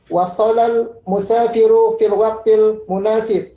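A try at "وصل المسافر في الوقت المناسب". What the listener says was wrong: Mumtaz.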